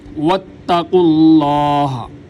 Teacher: واو کے اوپر ہونٹوں کو گول کیا جائے گا، تا باریک، قاف موٹا